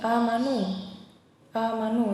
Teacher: Kemudian ada lagi amanu ya, karena ada hamzah berharokat fathah bertemu dengan alif, dibaca panjang 2 harokat